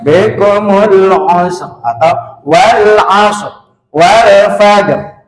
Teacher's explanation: Jadi ra-nya tetap terbawa tapi tidak utuh. Artinya hanya setengahnya dibaca gitu.